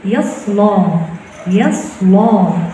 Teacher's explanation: عليك أن تفخمي حرف اللام